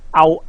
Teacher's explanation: 冇咗個▁NG▁聲，冇咗▁NG▁聲啦，就聽起上嚟個音好平，好肉酸，好似你條脷根黐住咗咁樣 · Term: 懶音